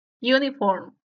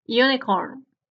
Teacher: El primer fonema tiene el símbolo de una J y se le considera una semivocal, no es una vocal.